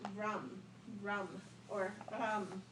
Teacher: that R sound a little tricky it's more like an L